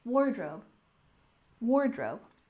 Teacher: wardrobe with a stress on the first syllable